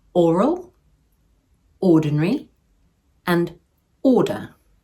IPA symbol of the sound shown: ɔː